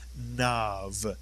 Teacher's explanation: the kamatz plus the yud remains an ah. The yud does not change a kamatz inside a word.